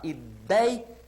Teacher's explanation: Ela apresenta o ditongo ei, com essa pronúncia, aberto, e na sílaba tônica, ideia.